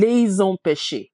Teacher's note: When that happens, the S is going to sound like a Z. We're going to run it together. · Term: liaison